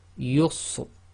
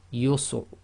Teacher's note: If you've got the Ra at the end of a sentence or stop, so it's acting as sakin, and it's preceded by a letter which is sakin, and that itself is preceded by a Dhamma sound, then again it's tafkhim